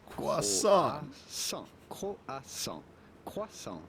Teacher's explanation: The T at the end of croissant is definitely silent